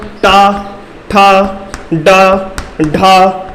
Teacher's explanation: तो इनका उच्चारण स्थान हो जाएगा मूर्धा। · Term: मूर्धन्य